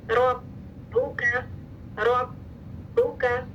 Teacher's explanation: साकिन बा पे राउंडिंग नहीं है, मुतहरिक बा पे राउंडिंग है। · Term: बा की शद